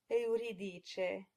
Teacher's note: the first syllable is pronounced as two clear, distinct vowels, eu.